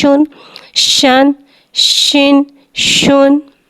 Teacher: शीन में तफशी वाली सीटी को ज़ाहिर करके पढ़ेंगे। शीन के ऊपर 2 पेश है, 2 पेश होठों की गुलाई के साथ अदा करके पढ़ेंगे।